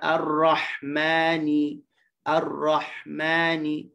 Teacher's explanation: huruf ha ni dia bersifat dengan rakhawah, tapi rakhawahnya yang tidak panjang